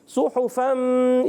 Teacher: صاد پر پیش ہے، ہا پر پیش ہے، اور گول کر کے ادا کریں گے، صاد کو موٹا رکھیں گے